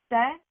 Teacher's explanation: Te, again, moving our tongue to the back of our front teeth